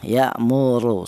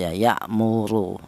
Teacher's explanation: Di sini ada ro di mana huruf ro ini berharakat dommah. Ini dibaca tafhim atau dibaca tebal ya. · Di mana huruf ra ini berharokat dhammah, ini dibaca tafkhim atau dibaca tebal ya, ya'muru, seperti itu. Di mana untuk menebalkan huruf ra yang dibaca tafkhim ini menggunakan lidah bagian belakang diangkat ke atas